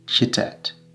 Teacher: Ch or kye, it's kind of a fusion between ch and ka.